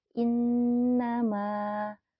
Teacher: Nun bertasjid merupakan gunah maka dibacanya harus didengungkan dulu ya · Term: gunnah